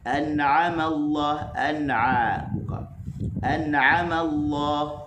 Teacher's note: an nun mati bertemu dengan ain hukumnya izhar